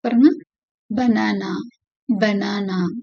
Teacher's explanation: the tongue is in the central position and the sound is very quick and unstressed